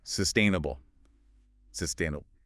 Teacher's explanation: it's on the second syllable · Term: the stress